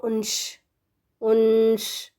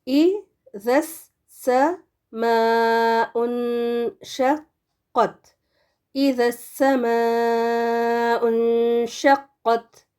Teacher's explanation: کو انش، انش، کیونکہ شین ہے نا اس کے بعد، تو شین کی طرف ہمارا زیادہ وہ پروننسیشن جائے گا، نون کو ہم شین میں چھپا دیں گے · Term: غنہ